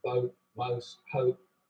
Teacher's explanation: the vowel sound in boat, most, hope starts with the tongue further forwards in the mouth